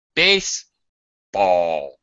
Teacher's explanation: Base is high, primary stress. Ball is low in pitch. It's way down here. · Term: secondary stress